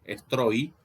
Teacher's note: Esta I no cuenta porque como es una I que está entre dos vocales, en rigor entre una vocal y un diptongo, funciona como semiconsonante, de manera tal que no hay que contarla.